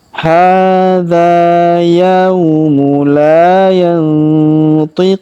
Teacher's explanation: Huruf Q kita panjangkan 2, 4, atau 6 harokat, karena di depan huruf Q terdapat waw sukun sebelum huruf pemberhentian, dan huruf pemberhentian huruf na kita sukunkan atau kita matikan.